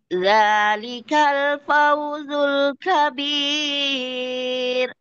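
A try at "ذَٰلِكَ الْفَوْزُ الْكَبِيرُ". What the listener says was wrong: Apa terlalu naik? Kabir.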